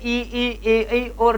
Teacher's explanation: करने पर, ये जो 5 वर्ण है इनका उच्चारण करने पर श्वास वायु जीवा के आगे वाले भाग में टकराती सी महसूस हो रही है